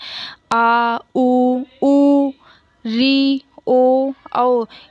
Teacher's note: जहाँ से जीभ हमारी जुड़ी होती है वहाँ से पश्च स्वर निकलते हैं